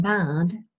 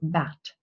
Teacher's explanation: Sometimes devoicing happens, but there is not this rule of final obstruent devoicing. And there's a huge difference in the quality of the vowel, depending on whether a voiced or voiceless consonant follows